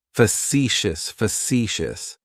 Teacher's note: Facetious has 3 syllables, and the stress is on that second syllable.